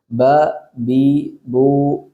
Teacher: രണ്ട് ചുണ്ടുകളുടെ ഇടയാണ് ബ ചുണ്ട് ഒരിക്കലും ഉള്ളിലേക്ക് വലിച്ചിട്ട് ബ ബ എന്ന് പറഞ്ഞു പോകരുത് ബ ബി